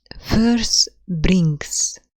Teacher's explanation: spondaic foot أو spondee اللي هو two stressed syllables